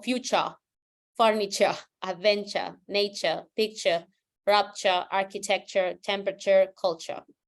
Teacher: if you want to sound British, you don't say the R